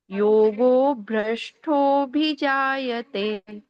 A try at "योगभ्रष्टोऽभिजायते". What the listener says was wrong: हाँ, योगो भ्रष्टो बोल दिया, योग भ्रष्टो है।